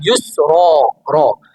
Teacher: Ra ni apa? Ra tebal. Panggil ra tafkhim.